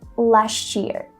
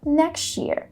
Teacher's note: When one word ends on a T and another begins on a Y, we just add this ch sound.